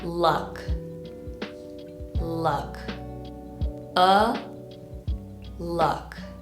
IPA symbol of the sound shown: ʌ